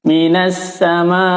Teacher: ketukan minassamaa minus alif lam syamsiah sama madu wajib muttasil maka wajib dibaca panjang lima harokat